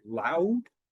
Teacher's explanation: concentrate on the vowel in the middle that I'm doing two movements in my mouth